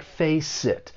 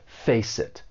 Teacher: the next word is a vowel sound so let's face it the final consonant sound in face may get linked with the vowel sound in it and it's going to sound like face it it's almost like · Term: linking